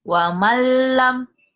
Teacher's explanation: nun mati ketemu lam itu idgham bila guna